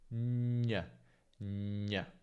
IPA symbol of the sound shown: ɲ